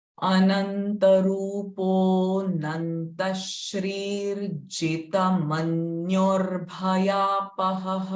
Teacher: Shrir, Jita, Manyur, again Bhayapaha. So Bhaya, before Bhaya, the ra sound will come.